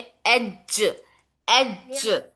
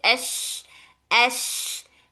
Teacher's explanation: दोनों की सिफात अलग-अलग है। जीम में हमें हवा जारी नहीं करना है। शीन में हमें हवा जारी रखना है।